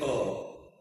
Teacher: So, A begins effortlessly from the throat.